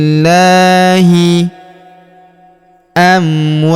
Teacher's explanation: Huruf wa kita panjangkan 2 sampai empat harakat. Karena di depan huruf wa terdapat alif sebelum huruf pemberhentian.